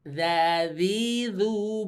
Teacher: ujung lidah kena gigi seri atas sedikit keluar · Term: huruf Zal